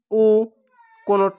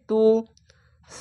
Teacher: বাংলা রস্যুকার পড়তে হয় মাজহুল পড়া নিষেধ টান দেওয়া চলবে না পেশ উচ্চারণে আওয়াজ সামনের দিকে যায় এবং ঠোঁট গোল রূপ হয়ে যায়